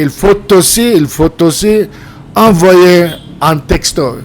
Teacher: Il faut aussi, you can make the liaison. You could say il faut aussi, or you could say il faut aussi envoyer un texto.